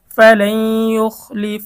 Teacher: ঈদগামে বা গুন্না, নুন সাকিনের পরে ঈদগামে বা গুন্নার হরফ ইয়া এসেছে, গুন্না সহ মিলিয়ে পড়তে হবে।